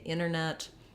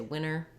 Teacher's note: that dropping of the T happens more in words like internet